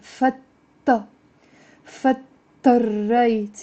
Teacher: You see the da is almost like it's not there even if it's written.